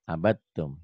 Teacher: Abattum, dalnya hilang ya.